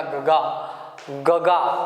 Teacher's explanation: यानी कि अभी सर्दी के दिन चल रहे हैं, यदि आपको सर्दी हो जाए, नाक बंद हो जाए, तो आप गंगा शब्द का उच्चारण यदि आपको करना है तो सिर्फ गगा सुनाई देगा, गगा गगा, गंगा नहीं सुनाई देगा, क्योंकि नाक बंद हो जाएगी। जब नाक बंद हो जाएगी तो ऊपर का अनुस्वार सुनाई नहीं देता।